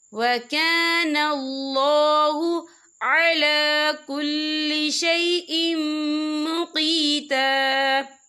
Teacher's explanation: تو یہاں پر ادغام ہوگا، تو ہم اسے غنّے کے ساتھ پڑھیں گے۔